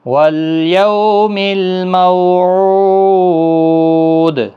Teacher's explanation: مو بھی واولین ہے، او واو مدہ ہے، اور دال ساکن پر قلقلہ ہوگا۔ وقف کی صورت میں 3 سے 5 الف کی مقدار کے برابر کھینچ کر وقف بھی ہوگا۔